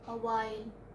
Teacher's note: We have ha sound here, but this is not pronounced